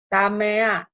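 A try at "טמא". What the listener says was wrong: Ini silent. Jadi bacanya tame ya, bacanya tame aja gitu. Tame.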